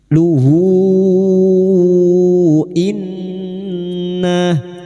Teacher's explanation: Hadhamir yang berharakat panjang dan bertemu hamzah mad silah tawilah, 5 harakat kita panjangkan.